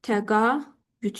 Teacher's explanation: Fikir verirsə, mən a və ü sait qoşağının arasında nə artırdım? Y samitini əlavə elədim.